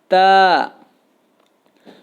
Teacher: تا کا مخرج جو ہے وہ زبان کی نوک اور ثنایا علیہ کی جڑ، یعنی اوپر والے جو 2 دانت ہیں، سامنے کے اوپر والے 2 دانت، ان کی جڑ کے ساتھ جب زبان کی نوک کو ملایا جاتا ہے تو تا ادا ہوتا ہے، جیسے تا۔